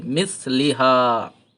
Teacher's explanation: জিহ্বার আগা, উপরের দাঁতের আগা, জিভটা একটু বের করে পড়লেই সাইয়ের উচ্চারণ হয়ে যায়।